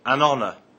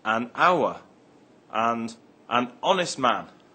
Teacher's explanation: The H in honour is silent.